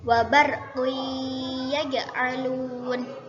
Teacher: Idgham itu memasukkan, gunnah itu dengung. Jadi memasukkan dengan mendengung. Lamanya mendengung kira-kira 1 alif atau 2 harokat. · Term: idgham bi gunnah